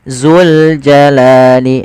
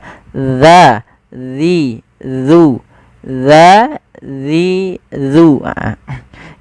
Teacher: Bagaimana melafalkan huruf dzal yang tepat? yaitu ujung lidah kita menempelkan dengan gigi seri atas kita